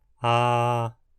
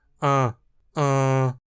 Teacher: Pronuncia aí uma vogal como a. Ah, agora pronuncia a mesma vogal de forma nasal